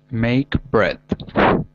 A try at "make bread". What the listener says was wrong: That's slow. If you say it fast, it's make bread.